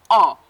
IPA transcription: ɒ